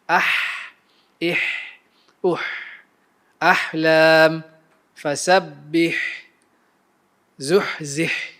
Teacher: Ha akan menghasilkan bunyi al-hams, yakni bunyi macam berbisik ketika ia sukun